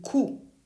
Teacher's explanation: Now, let's do the back-rounded series on the right. Start with a closed jaw, tongue pulled back, and tight lips for the vowel sound U in coup.